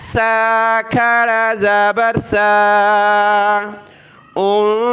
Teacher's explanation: یہ الفابیٹس جو ہیں عربک الفابیٹس یعنی الف با تا سا، تو چوتھے نمبر پر یہ حرف آتا ہے، 3 نقطے اوپر ہیں، اس کو پڑھتے ہیں سا۔ اس کے اوپر یہ کھڑا زبر ہے تو ایک الف کی مقدار اس کو ہم نے اوپر کی طرف کھینچنا ہے